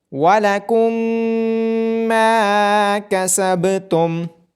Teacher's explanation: ادغام شفوی کرتے ہوئے میم پہ غنہ بھی کیا جائے گا